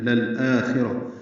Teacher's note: للآخرہ آ کو 2 حرکات لمبا کرنا ہے. خورا پر پڑھیں گے. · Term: مد بدل